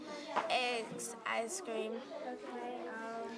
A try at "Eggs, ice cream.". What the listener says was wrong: You have to say it with some expression. I mean, if you're screaming, you're not going to go eggs, ice cream. It's eggs, ice cream.